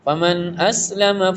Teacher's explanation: یہاں پہ نون ساکن کے بعد آپ دیکھیں گے کہ یہاں پہ حمزہ آ رہا ہے تو اظہار پڑھیں گے کلیئر ریڈ کریں گے